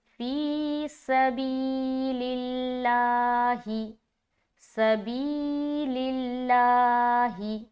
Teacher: ایک تو بی میں ہم کھینچیں گے کیونکہ یہاں پر یا مدہ ہو رہا ہے، اور ایک یہ جو لفظ اللہ کا لام ہے یہ کھینچے گا ایک الف کی مقدار کے باقدر